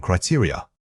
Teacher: Many speakers struggle with the final unstressed vowels. Remember that this word has an important stress pattern starting on the second syllable. It is not a single stressed unit, it's built around 3 smaller vowel sounds.